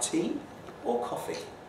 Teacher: it's very common for these to sort of sound a bit like a list, a rise and then a fall.